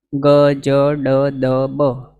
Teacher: પ્રાણપૂર્વક કે હવા કાઢવાની એવી કોઈ જરૂર નથી ઇઝીલી બોલાય છે